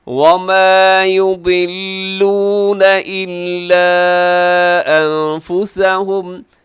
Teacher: الا کے اوپر مد منفصل اور انفسہم یہاں پہ اخفا ہوگا